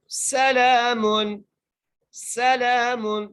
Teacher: لام کے اوپر کھڑی زبر ہے تو لام کو ایک الف مدار کھینچ کے پڑھیں گے